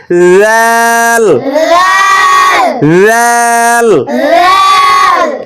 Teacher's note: এই রালের উচ্চারণও জিহ্বার আগা সামনের, জিহ্বার আগা সামনের উপরের দুই দাঁতের আগার সঙ্গে লাগিয়ে নরম করে উচ্চারণ করতে হবে